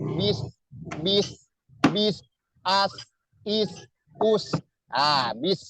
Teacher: Misal tadi bismillah bis itu sin itu hurufnya mengalir atau rokhawah sin ya · Bis ya sama dengan h ih sifatnya rokhawah ya, mengalir ya, suaranya mengalir. Dan juga dia mempunyai sifat hames itu banyak hembusan angin yang keluar ya, terdengar ada hembusan angin yang keluar